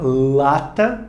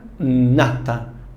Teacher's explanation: No som lata, a sua língua está mais para dentro do céu da boca. Nata, a sua língua está um pouquinho mais para frente.